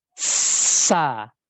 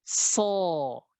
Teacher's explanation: huruf sod sama dengan huruf sin ini, tinggal pangkalnya saja dinaikkan